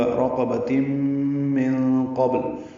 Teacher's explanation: نون ساکن کے بعد قاف آنے کی وجہ سے اخفا ہے، نون کی آواز چھپائیں گے، قاف پر پڑھیں گے، با ساکن پہ قلقلہ ہوگا۔